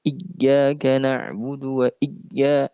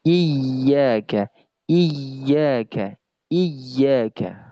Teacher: terlalu ditekan karena huruf ya bukan sifat syiddah. Huruf ya sifatnya rakhawah